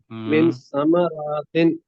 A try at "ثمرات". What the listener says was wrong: را نہیں ہے، رے کے اوپر زبر ہے، ساما روتن، ساما روت رزق،